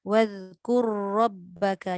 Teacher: Jadi jangan kita anggap bila ada ra yang banyak kita pun baca takrir banyak. Bila dah ra masuk ra, takrir tetap ada tapi dia tak kuat.